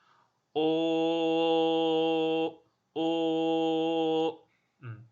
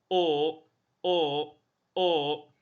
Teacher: 我可以很长时间保持同样一个音，没有动，没有滑动。